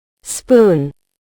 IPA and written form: spuːn (Spoon)